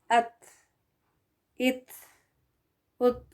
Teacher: जब ता साकिन होकर आता है तो वो हवा के साथ पढ़ा जाता है।